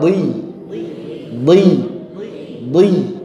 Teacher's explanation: Dia ketika kasrah tetap terjaga ketebalannya karena punya sifat itbaq